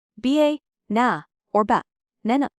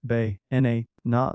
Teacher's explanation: It's ba n a na. The middle syllable is stressed.